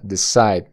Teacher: énfasis en la segunda sílaba